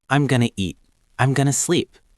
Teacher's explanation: In fast-spoken English, we often pronounce going to as gonna.